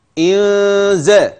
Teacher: مرقق اي لا تقل ا ان هكذا عند الوقف عند الوصل هذه النون الساكنه ستخف لوقوع زاي بعدها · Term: النون المخفاه